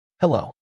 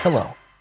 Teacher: Notice how the stress is on the second syllable.